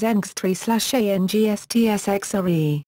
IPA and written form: ˈɑŋstsxreːu̯ (angstschreeuw)